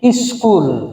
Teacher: অর্থাৎ এই শব্দের আগে অতিরিক্ত একটি ই ধ্বনিকে আমরা আগমন করে নিলাম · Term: আদি স্বরাগম